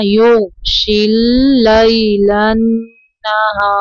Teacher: غین کو اوپر پڑھنا ہے اور قلقلہ نہیں کرنا